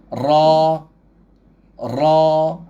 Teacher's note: Saya tegangkan pangkal lidah saya. Ra. Ada getaran kan, dan dia bunyi tebal. Okey. Baris fathah ni sama ada dia tak kira dia awal ke tengah ke hujung kalimah, dia memang tebal. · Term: ra berbaris